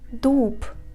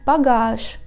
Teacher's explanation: Voiced consonants at the end of the word are deafened and are pronounced as their voiceless pair.